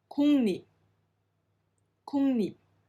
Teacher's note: the sound changes to a ng sound followed by a n